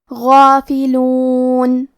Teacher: کلمت غافلون میں غین کی ادائیگی حلق کے اوپر والے حصے سے ہے، غین حروف تفخیم میں سے ہے، لہذا ہمیں غین کو موٹی آواز میں پڑھنا ہے،